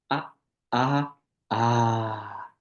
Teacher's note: you'll get this thing called a pluta, where it has 3 matras.